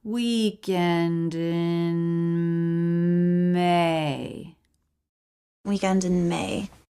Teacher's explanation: n right into M no break